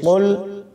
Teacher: قاف کو موٹا پڑھیں گے، دو نقطوں والا قاف ہے، کتاب والا قاف نہیں ہے، اس کو باریک نہیں پڑھنا، اس کو موٹا پڑھیں گے۔